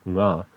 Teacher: And the voiced velar nasal, nga